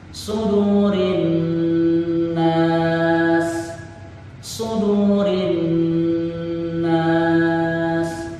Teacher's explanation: Ada huruf shad, ada huruf dal yang dibaca panjang 2 harakat, kemudian ada huruf nun yang dibaca dengung 2 ketukan